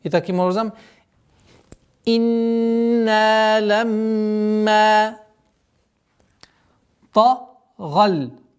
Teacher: Удержание назализации в размере двух огласовок. После назализации долгота в размере двух огласовок фатха над буквой мим.